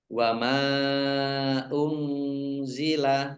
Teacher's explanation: Nun sukun bertemu dengan huruf za, bacaan ikhfa, dibaca samar-samar.